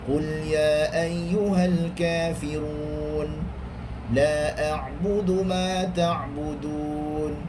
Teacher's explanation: Syekh Abdul Rahman Sudais, dia membaca dengan bacaan 2 harakat sahaja